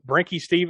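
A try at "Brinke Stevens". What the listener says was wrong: Just Brink without the E pronounced.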